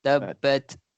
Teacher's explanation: ta huruf ta mati, ada macam angin keluar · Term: hamas